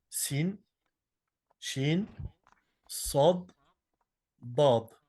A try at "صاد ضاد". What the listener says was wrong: Non. Et le sod et le dod, tu peux le faire plus fort. Sod, ضاد. ولا الضالين ولا ضاد.